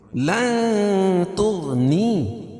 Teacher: یہاں ناک میں آواز کو چھپا کے پڑھیں گے لن تو غین کو پور پڑھیں گے کیوں غین حروف مستعلیہ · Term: اخفاء حقیقی